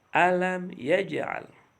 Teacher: Ya, dalam kalimat alam yaj'al, lihat jim berharokat sukun. Ya, berada di tengah-tengah kalimat tapi berharokat sukun, makanya harus dibaca memantul